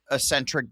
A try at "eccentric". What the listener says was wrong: no you know it's eccentric not Ecentric it's it's with an X eccentric